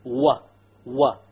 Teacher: the wow occurs when you join the two lips together but you don't make them touch you make a circular s hold w w but you don't